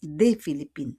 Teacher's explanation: we don't pronounce the S